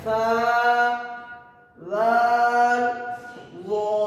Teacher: زبان کا کنارہ تھوڑا سا باہر آئے گا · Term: حروف لثویہ